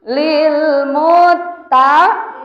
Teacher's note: Ada huruf yang bertasydid tapi tidak boleh dibaca dengung. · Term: ghair gunnah